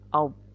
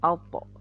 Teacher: Nah, to adalah huruf qalqalah, makanya dia bacanya mantul.